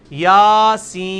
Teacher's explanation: سورہ یاسین کا میں نے ڈالا ہے, یا کے اوپر کیا ہے, کھڑی زبر, یاسین. سین کو آپ 5 سے 6 الف لے کے جائیں گے